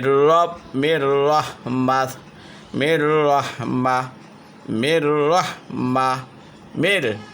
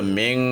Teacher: নুন সাকিনও তানবিনের পরে র আসছে তাহলে গুন্না ছাড়া স্পষ্ট করিয়া পড়তে হবে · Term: বেলাগুন্না